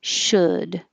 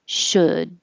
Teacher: we don't say the L, and the vowel is like took